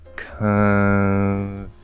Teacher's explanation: the uh it's spelled with an o but it's an uh make the uh partially nasal and then just go straight into the f